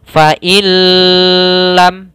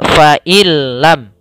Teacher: Idgham itu memasukkan, bila itu tanpa gunnah, maka hanya masuk saja. Jadi nunnya hilang langsung masuk ke lam, tapi nggak boleh ditahan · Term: idgham bila gunnah